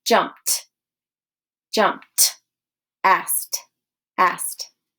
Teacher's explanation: ed is going to sound more like a T sound at the end